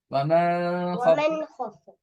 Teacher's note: சுக்கூன் செய்யப்பட்ட நூனுக்கு பின்னால் இல்ஹாருடைய எழுத்து ஹா வந்திருப்பதனால் அதனை வெளிப்படுத்தி ஓத வேண்டும்